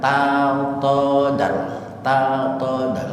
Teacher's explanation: Itu idgham mutajanisin karena tajanus. Satu makhraj, satu tempat antara dal dengan ta, makhrajnya sama-sama di ujung lidah.